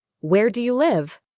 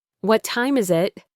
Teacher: And for what uh questions, the ones that start with who, what, where, when, why, or how, we usually use a falling intonation, just like a statement.